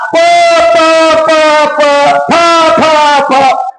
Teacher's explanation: तुमचा ओठाला ओठ हलत आहे